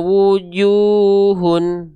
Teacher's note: karena domahnya ketemu sama wau sukun maka dua kali ayun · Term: mad thaobi'i